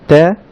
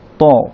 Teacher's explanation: তা সাউন্ডটা চিকন আর ত সাউন্ডটা মোটা, তা ত, তা ত।